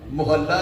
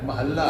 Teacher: ਜੇ ਥੋੜਾ ਜਿਹਾ ਸਮਾਂ ਵੀ ਉਹ ਬੁੱਲ ਹੋਰ ਜੁੜੇ ਰਹੇ ਜਾਂ ਹੇਠਲਾ ਬੁੱਲ ਥੋੜਾ ਜਿਹਾ ਅੱਗੇ ਨੂੰ ਨਿਕਲ ਗਿਆ ਤੇ ਮਹੱਲਾ ਦਾ ਮੁਹੱਲਾ ਬਣਦਿਆਂ ਕੋਈ ਸਮਾਂ ਨਹੀਂ ਜੇ ਲੱਗਣਾ। ਮੁਹੱਲਾ ਬਣ ਜਾਣਾ।